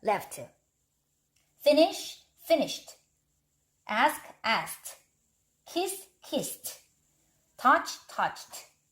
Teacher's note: 이런 아이들을 바로 무성음이라고 합니다. 이런 단어들 뒤에 오는, 이런 발음들 뒤에 오는 ed는 트 발음이 나요. 왜냐면 이 아이들이 무성음이기 때문에 요 ed도 발음이 무성음이 되어야지 발음하기가 쉽습니다.